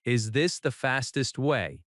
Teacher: Notice the rising intonation at the end because it is a question.